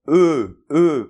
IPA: ə